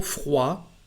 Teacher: the letter D is not said when it is at the end of a word